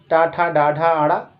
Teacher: इनका उच्चारण स्थान आपका मूर्धा है। मूर्धा की बात करें तो दांत के ऊपर जो स्थान होता है उसे मूर्धा कहा जाता है, दांतों के ऊपर मूर्धा है।